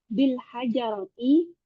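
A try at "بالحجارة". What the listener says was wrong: Bukan hajar, katanya hanya di kasroh.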